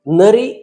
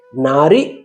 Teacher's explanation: ನರಿ ಎಂದು ಹೇಳಿದಾಗ ಹರಸ್ವಸ್ವರ ಅಕ್ಷರ ನ ಇದೆ ನಾರಿ ಎಂದು ಹೇಳಿದಾಗ ನ ಎನ್ನುವಲ್ಲಿರುವಂತಹ ಸ್ವರಾಕ್ಷರ ದೀರ್ಘ ಅಕ್ಷರವಾಗಿ ನಾರಿ ಎಂದಾಗಿದೆ